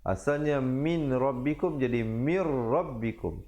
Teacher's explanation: kemudian idgham bila gunnah pula, masuk tanpa dengung